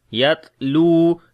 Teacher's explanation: تا کے اندر صفت ہمس اور شدت دونوں ہوگی